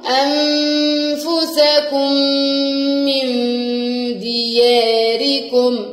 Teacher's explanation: الميم مع الميم، اضغموا مع بعض يبقوا كأنهم ميم واحدة